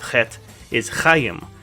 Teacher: it makes that hard kh sound that you do in the back of your throat